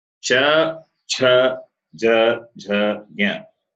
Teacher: They are Talavyaha. The sound comes from the palate.